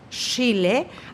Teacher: no hay la primera parte que es la oclusión, que es la pausa. Es solamente ese ruido, esa fricción. Por eso es que se transforma en ese alófono que llamamos fricativa.